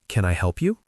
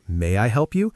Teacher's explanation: Notice the rising intonation at the end. >> Yes. It's a yes no question, so the voice goes up.